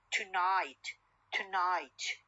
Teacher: O sound or schwa sound is deleted and the n becomes syllabic n.